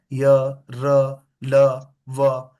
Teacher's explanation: तो ये सारे क्या है य र ल व ये सब क्या है सघोष है